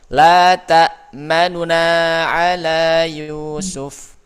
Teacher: yang nunnya itu diikhtilas, dicuri harakatnya tidak satu harakat tapi sepertiga harakat.